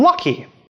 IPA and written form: lʌki (lucky)